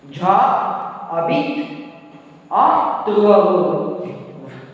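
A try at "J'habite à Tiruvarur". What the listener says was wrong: Pronounce together. Jabit. Two words are getting connected, no.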